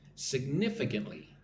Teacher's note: Again, the emphasis is on the second syllable.